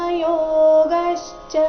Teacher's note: ಯೋಗಶ್ಚ ಗ ಮೇಲೆ ಆಘಾತ